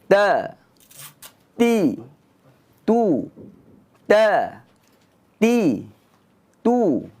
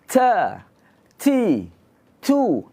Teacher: Kita ada syiddah bermakna kita tahan angin.